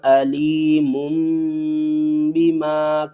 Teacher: یہاں پر میم تنوین کے بعد دیکھیں با آ رہا ہے تو ہم نے کیا کیا، تنوین کی آواز کو میم کی آواز میں بدل دیا